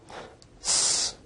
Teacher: s is a voiceless alveolar fricative